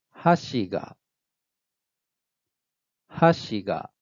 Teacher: High, low, low pattern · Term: high low accent